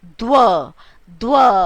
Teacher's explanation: व साउंड पूरी आ रही, द आधी आ रही है ना